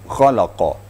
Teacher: Itu kha itu aqsal haqq, artinya di ujung di ujung tenggorokan. Diterasa getarnya pada ujung tenggorokan.